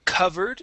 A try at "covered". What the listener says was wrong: Instead of covered, it is covered. Okay, give me a V sound. Covered.